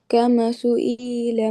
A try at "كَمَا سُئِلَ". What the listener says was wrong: کما سئیلا بیٹے، کما الف مدہ مس کر دیا نا، کما سئیلا۔